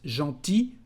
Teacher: The masculine form is just gentil, with one L, but you don't pronounce it.